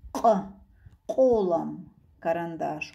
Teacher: Вот эта буква произносится обязательно горлышком. К в горле.